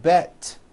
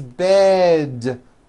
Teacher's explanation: to words with d endings bed has a voiced d ending it's not bet with an unvoiced T it's bed with a voiced d